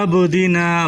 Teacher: با پر قلقلہ کریں، با ساکن ہے